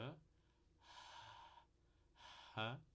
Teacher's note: Aqui é só uma aspiração, só deixar o ar passar pelas cordas vocais